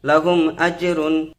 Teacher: কেননা মিম সাকিনের পর হামজা এসেছে, এই জন্য এটা মিম সাকিনটাকে বিনা গুণায় তাড়াতাড়ি পড়তে হবে। যেমন লাহুম আজরুন, লাহুম পড়া যাবে না, লাহুম আজরুন।